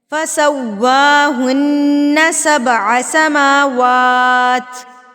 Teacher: واو جو ہے ہونٹوں کی گلائی سے ادا ہوتا ہے. بالکل ہونٹوں کو گول کر لیجئے، اتنا گول کر لیجئے کہ پینسل کا سکہ تو گزر سکے لیکن پوری پینسل ہمارے ہونٹوں کے درمیان میں سے نہ گزر سکے.